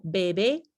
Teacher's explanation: el punto de articulación es bilabial porque para pronunciar estas tres consonantes, el labio inferior tiene que subir y tocar al labio superior